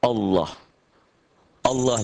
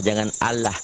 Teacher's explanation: suara a-nya lebih mendekati o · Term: tebal